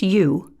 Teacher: Pronounce U and listen carefully. Do you hear the Y sound in U? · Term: long U